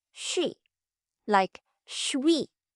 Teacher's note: shi meets the vowel wi. So, you get a w glide, too.